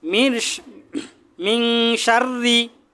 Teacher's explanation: র এর নিচে যদি জের হয় র বারিক করে পাতলা করে পড়তে হবে মিন শাররি র এর নিচে জেরবির র সাকিন তার